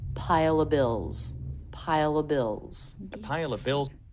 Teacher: So now the schwa links the two words together. · He takes the word of and he reduces it to just the schwa sound, so he drops the idea of the V altogether. This is common for this word.